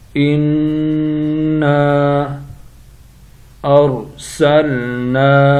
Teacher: نون مشدد ہے، غنہ کریں گے۔ غنہ کہتے ہیں آواز کو ناک سے نکالنا